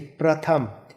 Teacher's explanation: जैसे प्रथम, प्रकाश, अब ये देखिए प्रथम, यानी कि प के साथ र का हमने बहुत कम उच्चारण किया और आगे बढ़ गए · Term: पदेन